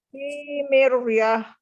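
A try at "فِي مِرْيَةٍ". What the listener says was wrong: Enggak, tipis. Tipis. Mir. Ya, nggak boleh tebal ya, karena huruf sebelumnya kasroh. Nggak boleh tebal.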